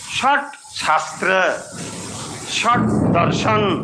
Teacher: দেখুন ওখানে সটা একেবারে মূর্ধন্য স